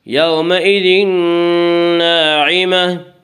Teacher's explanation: یومئذ ناعمہ، الف مدہ، الف میں شا مدہ ہوتا ہے، الف سے پہلے میں شا زبر ہوتا ہے، الف مدہ کو ایک الف کے برابر کھینچ کر پڑھیں گے